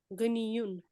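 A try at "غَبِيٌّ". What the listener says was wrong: गनी युन नहीं है ये, गबी। बा को नून पढ़ रही हैं आप।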